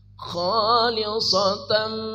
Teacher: Nunnya dibaca samar, ujung lidah jangan naik.